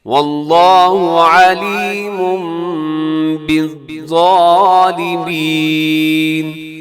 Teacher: علیمن کے آخر میں تنوین ہے اور تنوین کے بعد با ہے، تو تنوین کو میم سے بدل دیں گے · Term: اقلاب